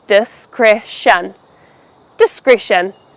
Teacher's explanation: Make sure you stress the second syllable, kreh.